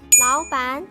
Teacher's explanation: The double syllable word changes to second and second tone.